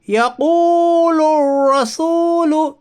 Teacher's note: واو ساکن سے پہلے پیش ہے اس لیے واو مدہ ہوگا، واو مدہ کو ایک الف کے برابر کھینچ کر پڑھیے۔ · الف لام تعریف کے بعد حروف شمسی کے 14 حرفوں میں سے را ہے، اس لیے ادغام شمسی ہوگا، یعنی الف اور لام کو نہ پڑھیے بلکہ بعد والے حرف سے ملا کر پڑھیے